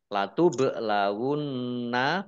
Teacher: bak sukun bacaan kolkolah dibaca memantul ditampakkan pantulannya · Nun tasdid dibaca runnah atau mendengung ditahan 2 harokat.